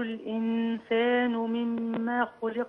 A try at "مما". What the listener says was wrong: لا مما في ألف، لكن ما فيش ألف في.